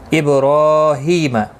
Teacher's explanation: با ساکن پر قلقلہ ہوگا، را کھڑی زبر کی وجہ سے پر پڑھا جائے گا، ایک الف کی مقدار کے برابر کھینچ کر بھی پڑھا جائے گا.